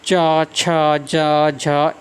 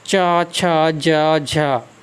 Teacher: हमारी हवा थोड़ी घर्षण करके निकलती है हमारे मुंह से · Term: स्पर्श संघर्षी व्यंजन